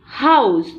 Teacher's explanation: आउ, जैसे हम बोलेंगे हाउस, तो ह, आउ, ये डिफ्थोंग रखा, और स, हाउस